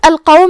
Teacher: قاف حروف تفخیم میں سے ہے تو ہم یہ حرف کو موٹی آواز میں پڑھیں گے